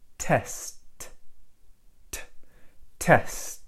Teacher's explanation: have no voicing at all so I say test test right I say just a simple straight T and with this T there is no voice at all